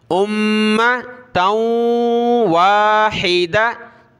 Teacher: ता को वाव के साथ मिलाया, नाक में आवाज़ पैदा की